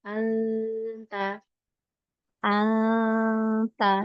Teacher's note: Kalau ikhfa di huruf ta, jangan ditekan lidah belakang. Anta lembut, alirkan suara itu ke depan.